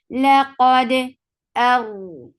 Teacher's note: قاد, what qalqala is, when you are attaching qaf with dal, the sound will get as if of shidda first, the sound will cut off abruptly, and then you will open it a little to bring qalqala. لقد Hamza is sharp of a top and just attach it raw will get of tawassut and little vibration.